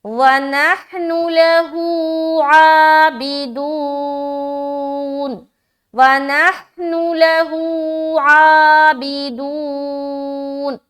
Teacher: الٹا پیش ہے، ایک الف کے برابر کھینچیں گے اور عین کو بھی کھینچیں گے اور دو کو بھی کھینچیں گے۔